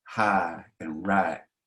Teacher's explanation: Instead of using the diphthong I, we'd say hi or right. You just use the first part of that diphthong.